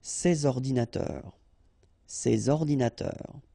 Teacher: so you should make the liaison between s and o